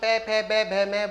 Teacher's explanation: आपके दोनों होठ एक दूसरे को स्पर्श करेंगे, पे फे बे में।